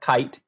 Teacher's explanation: you start at the ah or ah little in front of that and then it moves up to i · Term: diphthongs